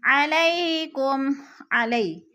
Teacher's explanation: یا ساکن سے پہلے لام کے اوپر زبر ہے تو ادھر یا لین ہے، یا لین کو لمبا بھی نہیں کرنا اور جھٹکا بھی نہیں دینا۔